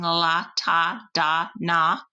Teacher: All of them start with the tongue tip behind the alveolar ridge. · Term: alveolar sounds